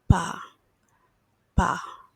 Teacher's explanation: It's not a B, but it's also not a P. It's somewhere in between.